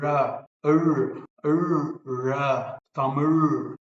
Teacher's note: Basically, you are saying la, like in other languages, la, the retroflex, but you have to fold your tongue backwards as well as inwards. So back as well as in.